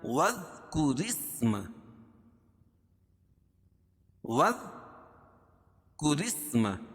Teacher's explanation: واذکر اسم، واذکر اسم، را باریک ہوگی کیونکہ را کے نیچے زیر ہے، اور را کو سین میں ملائیں گے، را کے نیچے را سین زیر رس، ملانے کی صورت میں یہ الف نہیں پڑھی جائے گی، اصل لفظ ہے اسم.